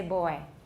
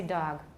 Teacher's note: We usually don't voice b-d-g when they're the first sound of an utterance.